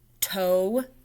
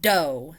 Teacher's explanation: the T is voiceless, the D is voiced.